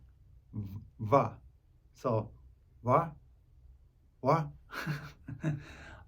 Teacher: The Hebrew letter va makes a sound that is not exactly the same as any English letter, but closest to a cross between v and w. If you put your two center top teeth 2 inches below your bottom lip, your mouth will say va.